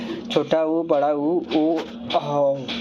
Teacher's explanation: जिन स्वरों का उच्चारण करते समय ओष्ठ गोलाकार हो जाते हैं वे वृत मुखी स्वर कहलाते हैं